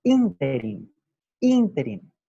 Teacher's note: interín no es una palabra aguda, es una palabra esdrújula y por lo tanto lleva su acento, su sílaba tónica, su sílaba fuerte en la primera I